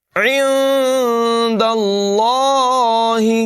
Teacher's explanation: عند اللہ نہیں پڑھیں گے بلکہ ناک میں آواز لے جائیں گے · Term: اخفا